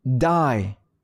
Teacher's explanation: D 같은 경우는 그 진동을 살려야 되기 때문에 die 해주셔야 된다는 거죠. 우리나라 말로 보자면 우리나라 말 그냥 디귿이랑은 또 소리가 달라요.